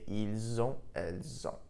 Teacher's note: the S in il, elle, which is normally silent, was actually pronounced, and I pronounced it like a Z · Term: link the two sounds together